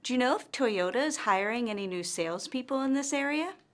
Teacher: our intonation rises at the end of this yes or no question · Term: rising intonation